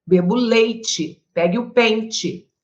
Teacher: Acredito que você pronuncie o som do I no lugar do E.